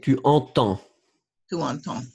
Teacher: je ne veux pas entendre de D